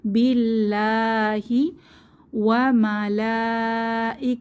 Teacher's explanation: লাতে বড় টান হবে মাদের সাইন আছে চার আলিফ মতো টানবো